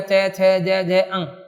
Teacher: यानी इनके उच्चारण में जीभ तालु के स्पर्श करती है। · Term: तालव्य